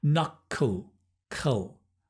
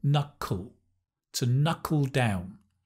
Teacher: It's the dark L, knuckle, to knuckle down.